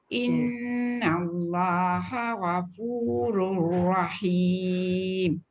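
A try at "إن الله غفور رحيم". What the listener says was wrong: Gha tu tebal sikit.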